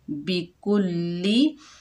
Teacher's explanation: काफ के ऊपर पेश, लाम मुशद्दद है, काफ को लाम से मिलाएंगे, मुशद्दद हर 2 मरतबा पढ़ा जाता है।